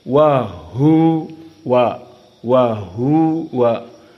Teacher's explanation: dan Wau makhrajnya wahua adalah asyafatan maka dari syafah wa masuk ke ha jauh